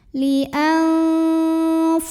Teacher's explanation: Maka nun sukun ini dibaca samar-samar ya. Jadi bunyi N-nya tidak jelas, melainkan samar-samar, siap-siap menuju fa disertai dengungan. Nah ini samar dan dengungannya seimbang. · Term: ikhfa